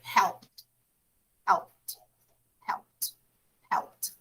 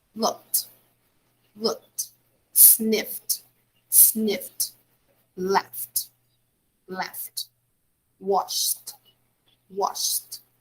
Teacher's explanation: you have to put ed you have to put the sound you have to produce the sound of t because it's voiceless